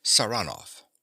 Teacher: he pronounces the name with a stress on the second syllable